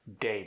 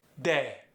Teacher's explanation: English vowels get more of a glide when you're saying them with the Brazilian Portuguese accent. For instance, day becomes day.